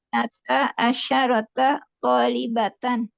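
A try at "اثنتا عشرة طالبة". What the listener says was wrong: Itnata asyrota Bu ya, bukan asyarota tapi asyrota. Terus kemudian asyrota.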